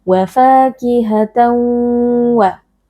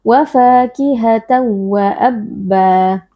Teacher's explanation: Wa fakihatan wa tanwin bertemu dengan huruf waw idgham bi gunnah. Cara membacanya kita memasukkan tanwin ke dalam huruf waw. Wa fakihatan disertai dengan adanya dengung.